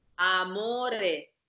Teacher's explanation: Closed O, single M, single R.